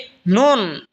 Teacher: জিহ্বার আগা তার বরাবর উপরে তালের সঙ্গে লাগা উচ্চারণ হবে নুন।